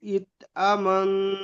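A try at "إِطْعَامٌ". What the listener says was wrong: আমুন, মুন, মান নয়, মুন।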